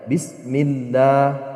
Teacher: Lafaz Allah yang dibaca tipis apabila dia didahului oleh harokat kasroh. Apabila kita menemukan lafaz Allah dan lafaz Allah ini didahului oleh harokat kasroh atau dibacanya i, maka lafaz Allah ini dia dibaca lah, tidak boleh dibaca Allah. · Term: tarkik